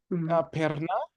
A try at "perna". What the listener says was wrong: can you roll your R per yeah you gotta work on it it sounds it sounds a little a little better if you can roll them